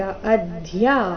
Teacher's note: ಮೊದಲನೇ ಚರಣ ಮತ್ತೊಮ್ಮೆ ಅಧ್ಯಾತ್ಮ, ಇಲ್ಲಿ ಧ್ಯ ಧ ಅಧಿಕ ಯಾ ಸಂಯುಕ್ತಾಕ್ಷರ, ಅದ್ಯಾ ಬೇಡ, ಅಧ್ಯ ಮಹಾಪ್ರಾಣ ಸ್ಪಷ್ಟವಾಗಿ ಬರಬೇಕು